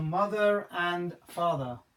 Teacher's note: No pronunciation of R on father. There's no vowel sound after it.